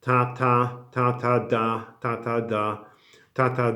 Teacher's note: when you articulate Polish T, the tongue touches the teeth. The tongue touches the teeth.